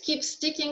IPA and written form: kiːp stɪkɪŋ (keep sticking)